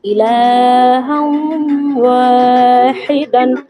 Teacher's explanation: লাম খাড়া জবর ইলা ওয়াও দু জবর হাম ইলাহাম ওয়াও আলিফ জবর ওয়া এখানে তানবিনের পর হচ্ছে ইদগামের বা গুণার অক্ষর এসেছে, এক আলিফ পরিমাণ গুণা সহকারে তাই পড়তে হবে। ওয়াও আলিফ জবর ওয়া আলিফ খালি ডান দিকে জবর আলিফ মাদ্দাকে এক আলিফ পরিমাণ টেনে পড়া।